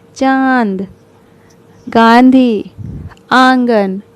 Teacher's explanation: इनका उच्चारण नाक और गले दोनों से होता है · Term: अनुनासिक